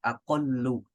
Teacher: Lam ketemu lam, yaitu aqlalu. Lam dan lamnya itu digabung, ditasydid menjadi aqallu. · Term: diidghamkan